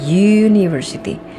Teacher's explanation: Kan kita tidak mengucapkan a university atau an university, selalu ada awalan y mengawali pelafalan kata university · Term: bunyi yeh